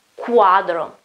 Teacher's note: It's not Q, as in English, it's a Q, like a K and a U together. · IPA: /ku/